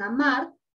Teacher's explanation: esta sílaba mar, en esta palabra amar, la sílaba mar, es la sílaba tónica, porque tiene la mayor fuerza de voz.